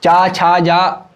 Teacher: तालु से आपकी जीभ जो है वो स्पर्श कर रही है, टकरा रही है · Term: तालव्य